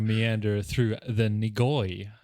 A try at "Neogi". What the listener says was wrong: No, Neogi. Neogi. You put the O in the wrong spot.